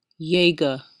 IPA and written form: ˈjeɪɡə (Jaeger)